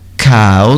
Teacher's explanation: E cow tem esse ar que sai junto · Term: K